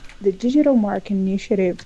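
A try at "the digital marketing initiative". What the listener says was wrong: that would be where deleting syllables is an important thing to be careful of, because it's not clear that you said marketing. sound like mark initiative. So for clarity, that would be, a priority.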